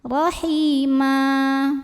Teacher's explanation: Maka cara bacanya tanwinnya jadi fathah ma dan panjangkan 2 harokat. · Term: mad iwad